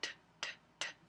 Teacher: Entonces otro ejemplo de un sonido sordo es la T, t, t, t, tocando la garganta otra vez y diciendo t, t, t. No se siente vibración.